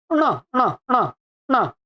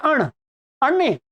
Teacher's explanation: और ये क्या है? नासिका भी आ जाएगी इसमें, मूर्धा और नासिका। तो इसका उच्चारण बनता है ण, ण, ण, ण।